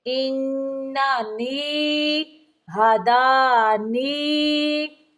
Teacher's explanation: قل، قل انانی، ان پہ نون مشدد کا غنہ ہوگا، انانی، نون زیریا نی کی آواز منہ سے نکالیں گے، نا کی طرف لے کے نہیں جائیں گے ، انانی نہیں پڑھیں گے، پڑھیں گے انانی ہدانی ربی الی